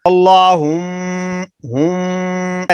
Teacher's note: ناک میں آواز آ رہی ایک الف کے برابر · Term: غنہ